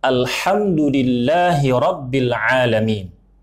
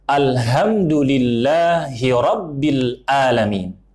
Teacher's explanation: banyak orang yang membacanya mengubah huruf ha dan huruf ain menjadi huruf ha dan huruf hamzah